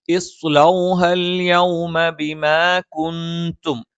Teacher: നൂനിന് ശേഷം ഇഖ്ഫ ആണ്. നൂനിനെ അവ്യക്തമായി മണിച്ച് ഉച്ചരിക്കണം.